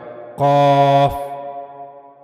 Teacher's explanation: قاف بھی پر پڑھے جانے والے حروف میں سے ہے, لہذا اس کو جب بھی پڑھا جائے گا اس کو آواز کو موٹا کر کے یعنی پر پڑھا جائے گا